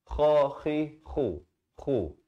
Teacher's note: Kha makhrajnya di mana? Di hujung kerongkong.